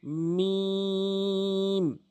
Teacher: দুই ঠোটের যে শুকন অংশ রয়েছে মিলিত করে উচ্চারণ